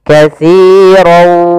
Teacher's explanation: Maka cara membacanya masukkan tanwin kepada huruf waw, maka dia langsung berbunyi waw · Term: idgham bi gunnah